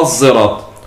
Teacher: بالإشمام بالخلط بين الصاد والزاي · صاد هذه الصاد مجهورة فتخرج كالزاي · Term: الصاد المشمة زايا